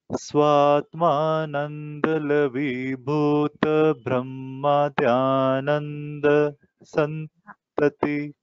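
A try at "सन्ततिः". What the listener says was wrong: Santatihi, Visarga is there. You should not say Bhuta, no Dhirga. Bhuta Brahma, immediately you have to take. And we should not take a pause after Bhuta. It is one Bhuta, name.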